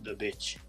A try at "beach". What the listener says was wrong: The beach, you mean? Because you're saying bitch.